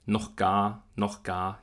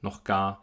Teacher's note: Im Wort noch ist es der Achlaut.